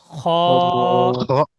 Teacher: খ, পুরো জিভের গোড়া থেকে